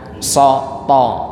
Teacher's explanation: Huruf yang tebal. Suaranya berat, bisa dikenali dengan fathahnya yang suaranya o. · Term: huruf tafkhim